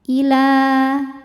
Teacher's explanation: Maka kalau berhenti panjangin lamnya 2 harokat. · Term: mad tabi'i